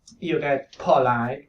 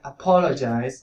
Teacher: You get apologize, also aspirated, because even if it's in the middle of the word, it is in the stressed syllable.